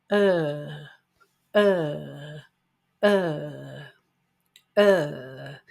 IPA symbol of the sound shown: ɜ: